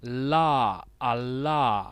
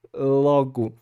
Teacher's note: a ponta da língua encosta na parte logo ali onde terminam os dentes e começa o céu da boca